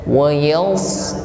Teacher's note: Wa yals, wa yals, huruf sad tebal. Bukan wa yas sebagaimana mengucapkan huruf sin. Bukan wa yas tetapi tebal.